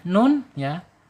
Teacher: Nun secara makhraj ada di al-lisan, di ujung lidah menyentuh langit-langit yang depan ya.